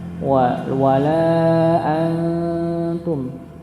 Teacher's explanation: Nah, di sini ketika ini sudah kita jelaskan wawu lam dibaca 4 harakat begitu nggih. An ini ada huruf nun ketemu dengan ta. Maka dia dibaca samar. La wala antum ya, jadi ada dengung, ada samarnya.